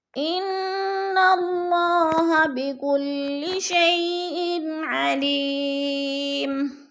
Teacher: انا کی نون مشدد ہے، سختی سے جمع کر پڑھیں گے، غنہ کریں گے